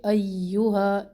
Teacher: یا مد ہے یہاں پر 2 الف کے برابر اس کو ہم کھینچیں گے. ایہا، یا کے اوپر تشدید پورا ٹائم دے اس کو.